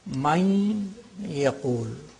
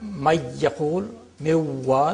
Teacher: The noon, nasality of the noon is there.